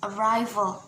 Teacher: So the stress is in the second syllable